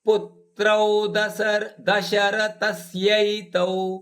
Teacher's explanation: ಪುತ್ರೌ ದಶರಥಸ್ಯೈತೌ, ಥ ಮೇಲೆ ಆಘಾತ ಇದೆ.